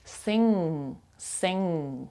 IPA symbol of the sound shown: ŋ